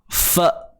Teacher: Matikan hamzah ni dengan bunyi yang betul-betul tertahan. Fa. Bunyi dia tak boleh pergi dah. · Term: sifat syiddah